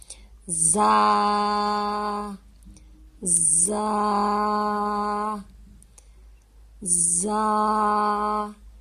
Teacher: سختی سے پڑھا جانے والا حرف ہے اور سیٹی والے حروف میں شامل ہوتا ہے۔ زا زا زا، اس کو بھی ہم ایک الف جتنا لمبا کر کے پڑھیں گے۔